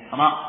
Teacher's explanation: Maka makhrajnya ra yudani ya, mendekati makhrajnya nun tapi sedikit dimasukkan ke zahrul lisan, ke bagian punggung lidah